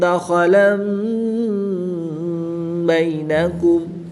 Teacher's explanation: وَلَا تَتَّخِذُوا أَيْمَانَكُمْ دَخَلًا بَيْنَكُمْ، دو زبر کی تنوین کے بعد حرف با ہے تو یہاں پر اقلاب ہوگا، دو زبر کی تنوین کو میم سے بدل کر غنہ زبانی کر کے پڑھیں گے